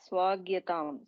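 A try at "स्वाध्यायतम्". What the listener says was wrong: There is no gya there. There is dya. Swadhyatam. Swadhyatam. Dya. Swa. This looks like kha, look at the width and decide this is not kha. See, kha also looks very close to that.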